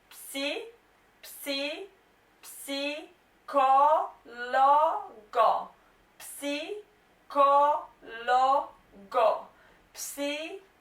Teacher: Now guys, to pronounce this noun properly, remember to pronounce the P, because there is a little bit of P. It's not that stressed, but there is a little bit of P.